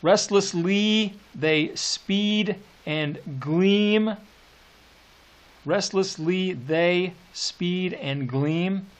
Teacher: three examples of assonance there with that long e